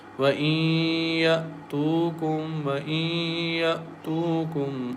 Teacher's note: There is a noon sakin is followed by ya, and ya is one of the merging letters. So we merge noon sakin into ya and recite with nasal sound